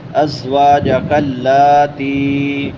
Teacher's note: لام کے اوپر کھڑی زبر ہے، ایک الف کے برابر لمبا کریں گے